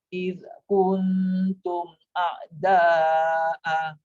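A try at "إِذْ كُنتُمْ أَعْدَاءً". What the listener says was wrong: Dia jangan dua. Dia jangan satu harakat, dia kena dua harakat. Dia ada lagi bunyi idh tu. Idh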